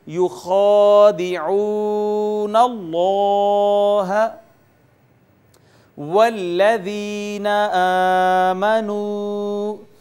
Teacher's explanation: لفظ اللہ، اس میں جلالت ما قبل مفتوح، اس کو بھی پر کر کے پڑھیں گے